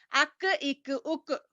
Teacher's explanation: قاف کی جگہ سے ذرا نیچے منہ کی جانب ہٹ کر اس سے کاف ادا ہوتا ہے